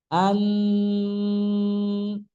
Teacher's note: Gunah yang paling tinggi. Bahkan kalau hidungnya dipijit itu mati bunyinya. Bunyi nunnya tidak akan keluar. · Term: gunah paling tinggi